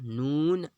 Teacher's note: سیرہ زبان تالو سے مل کر نون ادا ہوتا ہے۔ اس کا مخرج بھی آسان ہے، اتنا مشکل نہیں ہے۔